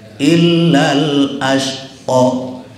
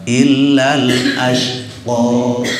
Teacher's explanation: Kalau ada alif bengkok, mau sakelnya berdiri atau sakelnya tidak berdiri, itu tetap kita bacanya 2 harakat.